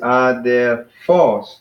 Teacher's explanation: we got three syllables but the accent is on the last one so it's just odd they're false and I emphasize the last